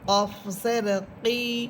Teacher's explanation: জিহ্বার গোড়া উপরে তালুর সাথে লাগবে